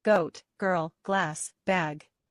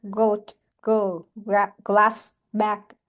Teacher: we already listen to the voice consonant sound g